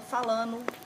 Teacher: Então, por exemplo, falando, a gente fala falando, né? Eu falo muito isso, tiro o ND.